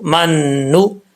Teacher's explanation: میم کو دوسرے نون سے ملائیں گے جس نون کے اوپر شد ہے، ساکن نون کے ساتھ نہیں. میم نون زبر من، نون پیش نو، من نو.